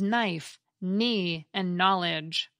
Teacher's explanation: One cluster that has disappeared is KN, which gives us the silent K